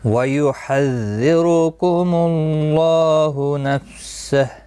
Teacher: اس کے اوپر کھڑی زبر بھی ہے ایک الف کی مقدار کے برابر کھینچ کر پڑھیں گے. نفسہ وقف کی صورت میں ہا ساکن پڑا جائے گا